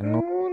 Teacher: জিহ্বার আগা তার বরাবর উপরে তালুর সঙ্গে লাগাইয়া নুন উচ্চারিত হয় · ঠোঁটটা সামান্য পরিমাণে একটু গোল হয়ে যাবে